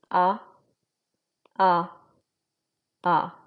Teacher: a little more in the back of your throat a you can feel it in your nose maybe